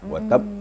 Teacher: Watab ditasdikkan dulu baru Lepaskan, diangkat qalqalahnya.